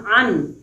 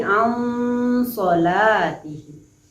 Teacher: Kemudian an sholatihim, nun sukun bertemu dengan shad, dibaca samar atau disebut dengan ikhfa, di mana ketika kita berada pada bacaan nun sukun, mulut kita bersiap-siap untuk membaca so, sehingga dia berdengung. Ansolatihim, jadi nunnya tidak terdengar dengan jelas karena dia berisi dengung, ya.